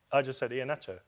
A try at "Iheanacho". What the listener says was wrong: Exactly. That's what I'm saying. You are adding an H. Iheanacho. Iheanacho. It's not Nacho. It's not Iheanacho.